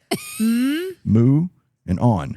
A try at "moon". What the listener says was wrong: Not moo. There's three sounds. Ooh, n. Ooh, n. There's 3 sounds.